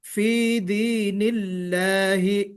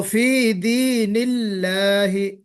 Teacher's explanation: یہاں پہ لام کو، لفظ اللہ کو ہم باریک پڑھیں گے. یہ جو لفظ اللہ ہے یہاں پہ ہم اس کو موٹا نہیں پڑھیں گے، فی دین اللہ نہیں پڑھیں گے.